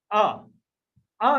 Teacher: यदि आ बोलोगे तो आपके जीभ का बीच वाला भाग क्रियाशील रहता है। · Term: मध्य स्वर